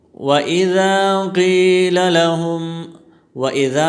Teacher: وَإِذَا میں الف مدہ ہے، اس کو ایک الف کے مقدار کھینچ کر پڑھیں گے، مد اصلی بھی اسے کہتے ہیں۔